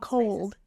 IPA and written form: koʊld (cold)